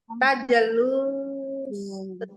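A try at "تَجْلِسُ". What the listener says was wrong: tajelis, Bu. Kasroh, Ainul fi'linya kasroh. Tajelis. Tajelis.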